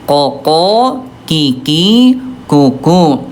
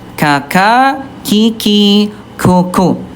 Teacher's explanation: dia sifat hurufnya ayah bunda dia jahar, tidak ada udara, sementara kalau kaf dia alhams ada udara